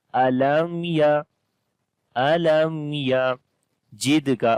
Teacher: We make izhar shafawi here, the clear sound of mim